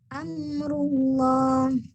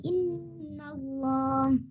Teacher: Hurufnya tetap lam, tapi bunyinya bunyi O. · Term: lam jalalah